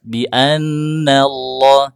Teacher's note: nun bertasydid ditahan yang lama dengungnya